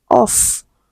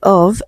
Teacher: The only difference is F is without vibration that is it is voiceless and VV is with vibration that is it is voiced.